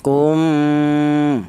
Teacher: mim ini dibaca dengung yaitu panjangnya dua harakat atau dua ketukan